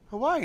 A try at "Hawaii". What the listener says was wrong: He kind of pronounces the second I. You just say Hawaii. It's Hawaii. Yeah, he doesn't do that. He just says Hawaii.